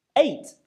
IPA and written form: eɪt (eight)